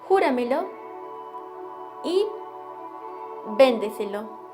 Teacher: Junto a estas están las palabras sobreesdrújulas, que son aquellas que poseen acento en la sílaba que precede a la antepenúltima